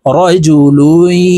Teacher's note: এই লাম ইয়ার সাথে গুন্নার সহিত মিলাইয়া পড়ব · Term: গুন্নাহ